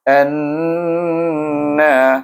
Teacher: Perhatikan saya dengungkan bunyi an sebab nun bertasydid. Anna apa panjang wajib gunnah dua harakat.